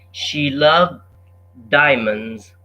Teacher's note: the D is simplified almost out the D is not pronounced